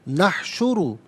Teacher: نحشر میں را پر پیش ہے، را کو پر کر کے پڑھا جائے گا · پر پیش ہے، را کو پر کر کے پڑھا جائے گا، المتقین کے لام کے ساتھ، لام ساکن کے ساتھ اسے ملائیں گے، درمیان میں سے الف حمزہ کو حذف کیا جائے گا